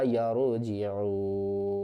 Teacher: اور وقف کی صورت میں نون کو ہم ساکن کر دیں گے